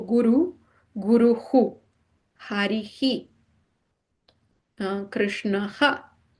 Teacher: visarga, it basically repeats the preceding vowel once again.